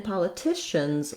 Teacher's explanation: letter S does say the Z sound because it follows a voiced consonant